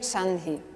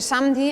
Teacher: Porque la descripción concreta es que por el contacto esa labial se convierte en dental, es decir, cambia su punto de articulación, adopta el punto de articulación de la consonante siguiente.